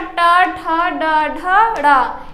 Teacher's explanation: ड़ हो और रा हो या फिर शा हो तो इन सब का उच्चारण स्थान मूर्धा होता है। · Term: मूर्धन्य वर्ण